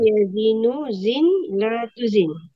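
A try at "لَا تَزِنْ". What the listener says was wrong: Lata. Kalau mujarad lata, enggak ada latu. Kalau mujarad lata, tanya fathah.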